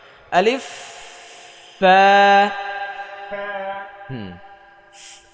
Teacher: এই ওপরের দাঁতের সামনের উপরে দুই দাঁতের আগা নিচের ঠোঁটের পেটে লাগাতে হবে